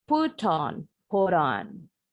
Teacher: Kalau orang Amerika tadi dibilang T-nya bunyinya seperti D cepat.